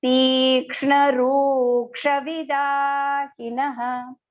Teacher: V small, da long, he small, and even the na is small, and then visarga.